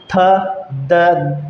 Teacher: थ, द, जब भी हम इन वर्णों का उच्चारण करेंगे तो जो हमारी जीभ है वो दोनों दांतों के बीच में आ जाएगी। ठीक है दोस्तों, उच्चारण करते समय अपनी जीभ को काट मत लेना, ठीक है, नहीं तो बहुत दर्द होगा। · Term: दंत्य व्यंजन